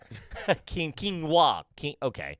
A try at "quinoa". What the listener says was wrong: No, there's an N in there. Quinoa.